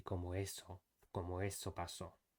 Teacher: So between conseguí and él, it should be conseguí él, not conseguí él. There shouldn't be any gap or any blockage of air using the glottal stop in the middle.